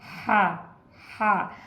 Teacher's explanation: जब हा पढ़ रहे थे हम तो हवा को बाहर निकाल रहे थे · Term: हा की आवाज़